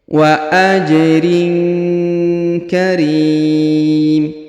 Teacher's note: huruf tanwin in pada huruf rin bertemu dengan huruf ka, maka hukumnya didengungkan dan disamarkan